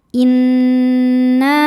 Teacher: Cara membacanya didengungkan, tahan dengungannya kurang lebih 2 harokat. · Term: gunnah musyaddadah